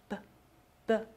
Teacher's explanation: 首先，嘴闭上，气流从口腔中冲出来 。注意，它和英语的最大的区别是，英语这个字母是送气的音，而西班牙语不送气。英语的送气读作▁p